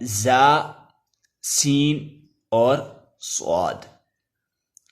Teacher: مخرج یہ ہے جی نوک زبان، اور نوک زبان یعنی زبان کی آگے والا سرا، سامنے والا بالکل سرا نوک زبان، اور ثنایا سفلا کے کنارے، اور مع اتصال ثنایا علیا کے، مع اتصال ثنایا علیا کے یعنی ثنایا سفلا اور ثنایا علیا کے کنارے ملتے ہیں اور زبان کی نوک ان سے ٹچ ہوتی ہے، تو یہ تین لفظ ادا ہوتے ہیں، زا، سین اور صاد۔